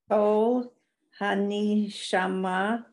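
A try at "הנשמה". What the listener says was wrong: It's actually just Han, because the two vowels, Hanshama.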